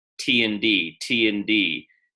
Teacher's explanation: The only difference is your vocal cords are vibrating for the D and not for the T. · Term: voiced T